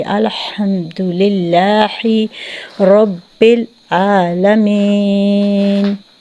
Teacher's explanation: وسط حلق سے جو ہے ہا ادا ہوگا الحمد کا